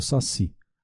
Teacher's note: o saci, a última sílaba é tônica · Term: Assento tônico